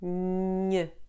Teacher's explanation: Now produce the sound making it come from your nose, not your throat. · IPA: [ɲ]